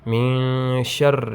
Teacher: نون ساکن کے بعد شین یہ حروف اخفا میں سے ہے، یہاں پہ اخفا ہوگا